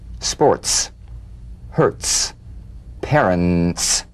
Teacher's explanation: a crisp percussive hiss between the tip of the tongue and the teeth